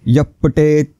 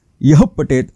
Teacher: ओठांमधून किंचित फुंकणी सोडल्यासारखी हवा सुटली पाहिजे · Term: विसर्ग